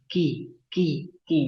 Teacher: Kalau kaf itu tipis banget, ki, ki, ki. Jangan, nggak perlu dengan tekanan yang kuat seperti qi. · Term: huruf kaf